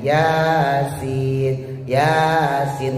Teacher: ya-nya 2, sinnya 5 sampai 6